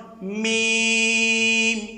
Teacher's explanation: উভয় টুটের শুকনো অংশ থেকে উচ্চারিত হবে। যেমন মিম, এখান থেকে মিম, মিম শুকনো অংশ থেকে উচ্চারিত হবে। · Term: হরফে শাফাবিয়া